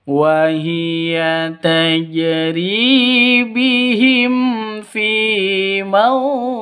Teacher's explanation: Nah, seperti biasa waw mati diawali dengan fathah itu sifat lin, terus diikuti dengan huruf hidup dan berada di waqaf, maka namanya mad lin, seperti itu. Fi mauj panjangnya boleh 2, boleh 4, boleh 6 ketukan, seperti mad arid lisukun.